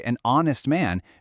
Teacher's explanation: and we say an honest man because the h is totally silent. So the word actually starts with a vowel sound.